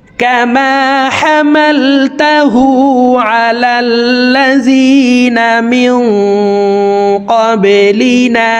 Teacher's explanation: এই নুন সাকিনকে নাকের ভিতরে লুকাইয়া গুন্নার সহিত পড়ব মেয়ং ক্বাবলিনা বা কলকলার হরফ নিচের দিকে ধাবিত করে ধাক্কা দিয়ে উচ্চারণ করব